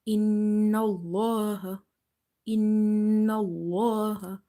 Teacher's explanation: Lam is heavy because there is a fatha before the letter lam in the word Allah.